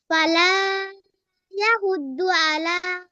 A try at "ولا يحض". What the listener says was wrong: ওটা কি ফালা? হুম, এটা কি ফালা?